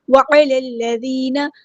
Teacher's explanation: مِسْكِينٍ، وَعَلَى الَّذِينَ، عین کو مستحلق یعنی تھوڑا سا ادا کریں، لام کو لام کے ساتھ ملا دیں گے، حمزۃ الوصل ہمارا ڈراپ ہو جائے گا